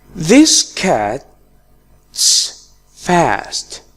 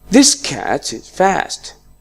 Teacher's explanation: I used is in a weak form and it was pronounced like cat's fast. In the second example, I pronounced is as z.